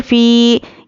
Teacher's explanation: या पर जज़म और उसके पहले ज़ेर एक अलिफ के बराबर खींचकर पढ़ेंगे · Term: या मद्दा